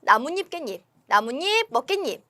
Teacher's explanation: 니은 소리가 덧나거나 혹은 니은 소리가 첨가된다. · 나무와 잎이 만났고 그리고 깨와 잎이 만나가지고 지금 니은이 첨가가 되는 경우입니다.